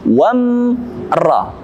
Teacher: Ada mim sukun bertemu dengan ra. Itu mim sukun harus kita katupkan bibir kita dengan jelas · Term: izhar syafawi